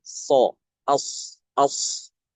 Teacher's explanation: Huruf sod itu huruf isti'la. Ketika membaca huruf sad itu dengan mengangkat pangkal lidah. Ya, pangkal lidahnya itu terangkat sehingga suaranya tebal.